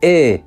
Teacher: the longer one was pronounced with a slightly more tense pronunciation so something like e was the long one and that's what's